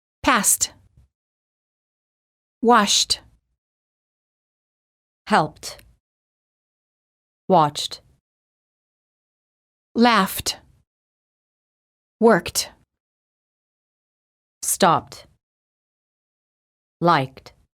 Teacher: if the last letter of the word ends in a voiceless consonant the E is silent and the D is pronounced as t